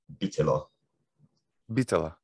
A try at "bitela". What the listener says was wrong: I'm not sure if the T would be that aspirated,